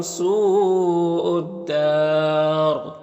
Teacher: میم میں اظہار شفوی ہوگا، سو میں مد متصل ہے، اور یہاں پر وقف کریں گے تو را کو پر پڑھیں گے اور مد عارض وقفی ہوگا